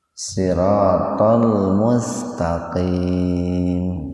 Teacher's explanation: Nah, itu hukum tajwidnya itu mad arid li sukun. Baca panjang itu Pak, 4 sampai 6 ketukan.